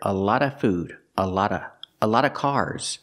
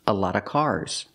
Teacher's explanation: You hear a lot of food, a lot of cars. Before a consonant, you don't hear the v, usually.